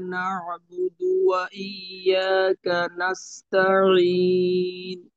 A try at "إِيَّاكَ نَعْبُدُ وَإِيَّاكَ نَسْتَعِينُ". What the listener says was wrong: তো আইন আরেকটু ক্লিয়ার করতে পারলে ভালো হয়। একটু আহ, অস্পষ্ট মনে হয়। অস্পষ্ট বলতে যে মাখরাজে আরেকটু হালকা ভাবে থাকতে পারলে ভালো হয়।